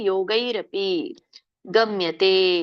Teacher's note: ಇಲ್ಲಿ ಯೋ ದೊಡ್ಡ ಯೋ ಇಲ್ಲ, ಯೋ ಎಳಿಬೇಡಿ.